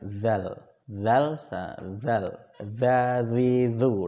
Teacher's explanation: Zal itu lidahnya pasti tergigit dan pengucapannya ringan.